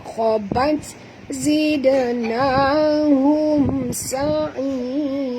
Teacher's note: Mim mati bertemu sin, kita tak boleh dengung perempuan izhar syafawi.